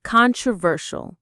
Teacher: Con, tro, ver, shaw. The strongest part of the word, the part we stress is ver.